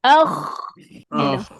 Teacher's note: Bahagian atas ataupun hujung kerongkong eh. Ha macam kita nak buang kahak.